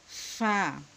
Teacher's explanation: উপরের দাঁতের আগা নিচের ঠোঁটের পেটের সাথে বাহিরের দিকে একটু বাতাস বের করে তারপর উচ্চারণ করতে হবে।